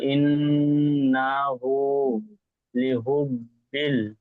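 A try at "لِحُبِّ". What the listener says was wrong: বড় হা পড়েন, লিহুব, লিহুব, হুব,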